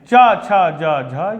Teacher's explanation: आप बिना तालू के इनका उच्चारण नहीं कर सकते हैं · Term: च वर्ग